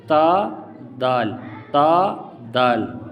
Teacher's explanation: تا اور دال یہ مرقق ہے، یعنی باریک پڑھنے والے ہیں۔